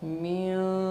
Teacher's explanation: इख्फ़ा के वक्त नून की आवाज़ नाक में गुनगुनाती है और नाक में थोड़ी सी छुपती है, इस वजह से इसका नाम इख्फ़ा रखते हैं।